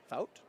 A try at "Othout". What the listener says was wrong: Thout. I think she left the O in there, so I think it's Othout.